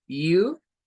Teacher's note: el sonido típico del you como una u larga con esa J o Y